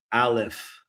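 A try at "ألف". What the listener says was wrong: So again, when we say alif, alif. we're trying to avoid saying like an R sound, like Alif. Alif, yes.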